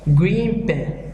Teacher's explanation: In this, the sound at the end of one word changes to be more like the sound at the beginning of the next. Thus, the N at the end of green becomes an M when placed next a word starting with P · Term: Assimilation